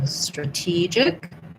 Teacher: strategic is a schwa in the first syllable, and then the T gets stressed, and then we still have a J sound.